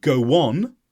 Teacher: with an O Val we often use a w sound such as go on